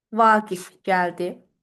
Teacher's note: verilmiş cümlədə vurğu sizdə düşür sonuncu hecaya